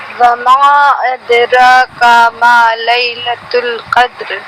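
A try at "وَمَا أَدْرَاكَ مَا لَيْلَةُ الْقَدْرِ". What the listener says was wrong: ابھی بھی آپ کھینچ رہی ہیں. آپ کو نہ کھینچے, را کو موٹا بنا. را کما ادراک ما ادراک ما. اور ماں نہیں میں.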